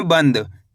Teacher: अगर बनद पढ़ दोगे तो यहाँ पे ना का पूरा उच्चारण हो जाएगा, जबकि अपन को करने के ना का आधा उच्चारण निकालना है।